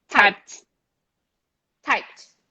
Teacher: type no vibration you go straight to t